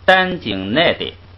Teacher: 那四个鼻音一有前加字变成一声，后边仨又给把一声拽下来，所以它完全是一个四声